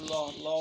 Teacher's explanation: যেমন ল ল উচ্চারণ করলে দেখবা ডগাটা দাঁতের মধ্যে লাগে, হ্যাঁ, দন্তমূলে লাগে এবং বাতাসটা দুই পাশ দিয়ে বেরিয়ে যায় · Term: পার্শ্বিক ব্যঞ্জন